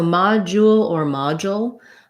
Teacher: letter o says ah that's where the stress is that's going to be long